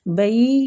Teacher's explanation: بئی یا لین ہو رہا ہے، تھوڑا سا کھینچیں گے